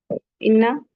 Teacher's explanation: इन्ना नून मुशद्दद है, गुन्ना करेंगे